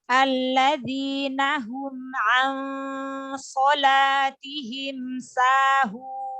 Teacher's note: makharijul huruf H itu keluar dari tenggorokan bagian bawah.